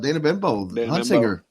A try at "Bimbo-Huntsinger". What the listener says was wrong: You need to pronounce her name all the way through, otherwise it sounds like you're saying Bimbo.